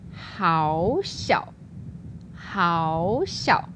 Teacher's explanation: So normally we have two third tones, but when we do the variation, the first one becomes the second tone.